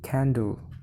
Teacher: For example, in the word candle, which the first syllable is spoken longer and louder, while the second syllable is spoken shorter and quieter. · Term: stress